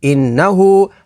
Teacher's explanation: ہا الٹا پیش ہو، انہو، ہا کے اوپر کھڑی حرکات ہے، کھڑی حرکات کو حروف مدہ کی طرح لمبا کر کے پڑھیں گے۔